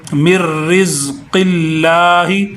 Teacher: لفظ اللہ سے پہلے والے لفظ کے نیچے زیر آ گئی تو ہم اس کو کیا کریں گے، لفظ اللہ کو باریک کر کے پڑھیں گے